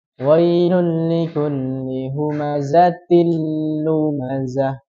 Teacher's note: ketika kita meleburkan ke huruf setelahnya itu tidak ada dengungan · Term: bila gunah